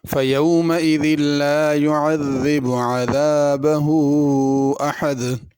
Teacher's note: تینوں الفاظ میں زال آ رہی ہے، اس کو زا کر کے نہیں پڑھنا۔ لا يعذب کا معنی ہے نہیں عذاب دیتا، اگر زا کر کے پڑھے عذب اس کا معنی تو ہوتا ہے میٹھا ہونا، تو معنی بہت غلط ہو جائے گا۔